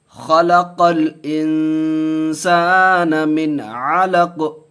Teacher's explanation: تو یہاں جزم دے دیں گے قاف پر، تو یہ قلقلہ کا قاعدہ بھی ہو جائے گا. من علق، بڑی خا ہے، خا کی پر کر کے پڑھیں گے، قاف نکال کر کے پڑھیں گے. خلق الانسان من علق.